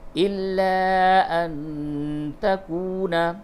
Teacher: نون ساکن کے بعد تا ہے، اس جگہ پہ اخفا کیجیے گا